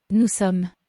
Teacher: Nous ends in an S, and it's not followed by a vowel or a H, so this S is silent.